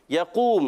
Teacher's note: क़ाफ़ का मखरज ज़बान की जड़ और ताल्लुका नर्म हिस्सा, हुर्फ़े लहविया से ताल्लुक़ है।